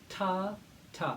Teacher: When we say ta, the tip of the tongue is behind the top teeth at the roof of the mouth, kind of in the center there